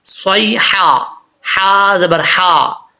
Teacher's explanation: اس ہا کا تعلق حلق سے ہے، سینے کی طرف نہیں ہے، اس چیز کا آپ نے خاص خیال رکھنا ہے، بھاری ساؤنڈ کے ساتھ نہیں پڑھیں گے، یہ بریک ہا ہے، حلق سے پڑھیں گے۔